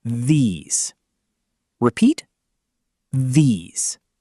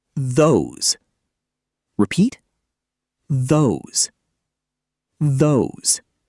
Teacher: Position the tip of your tongue for the th sound and turn on your vocal cords all the way through the word.